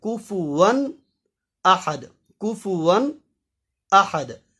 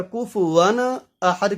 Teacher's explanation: نون ساکن اور نون تنوین کو ہم حروف حلقیہ سے ظاہر کر کے پڑھیں گے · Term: اظہار